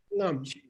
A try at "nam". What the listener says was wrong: No tongue, just throat. Nam. High tone. Nam.